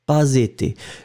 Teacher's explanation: il n'y a pas de pause entre pas et été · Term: liaison